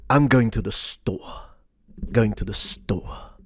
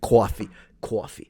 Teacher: in old school New York, they move kind of flat and then it goes down